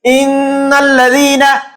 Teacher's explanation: গুন্না কিভাবে করতে হয়, ইন্নাল্লাযীনা, অর্থাৎ এই যে নাকের ভিতরে বাজায়া একটু থামলাম, এইভাবে গুন্না করতে হয়